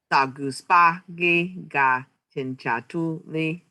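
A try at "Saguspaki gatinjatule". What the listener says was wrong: Yeah. A on the end. Tinjatule.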